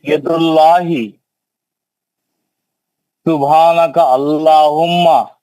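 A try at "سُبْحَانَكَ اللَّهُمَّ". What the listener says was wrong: नहीं सुब्हानका अल्लाहुम्मा नहीं है, सुब्हानका अल्लाहुम्मा काफ के जबर से मिलाओ।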